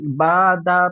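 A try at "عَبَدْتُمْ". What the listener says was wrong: বাদা হবে না দাল পরিপূর্ণ উচ্চারণ করেন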